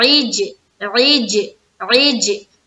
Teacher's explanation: क्योंकि जीम जो है ना, जीम के ऊपर सुकून है और जीम हुरूफे कलकला में से है, और कभी भी हुरूफे कलकला वाले हर्फ पर सुकून आए तो हमें करना होता है कलकला, यानी कि अपनी आवाज को टकरानी होती है, जिससे डबल साउंड निकल के समझ आएगा, या कह ले बाउंसिंग साउंड, या कह ले इको साउंड